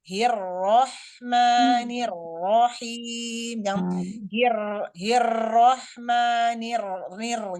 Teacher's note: terkhusus pada saat huruf ro ditasdidkan Ya Ro yang tasjid maka sifat takrir yang melekat pada huruf ro mesti disembunyikan